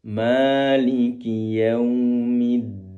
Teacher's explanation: Ma panjang dua harakat saja jangan sampai lebih